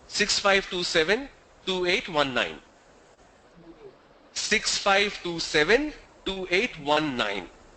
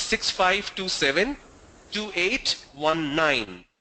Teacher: Now when they say 9, the tone goes down and it's not clearly audible.